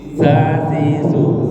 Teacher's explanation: Za ujung lidah bersentuhan dengan ujung gigi atas.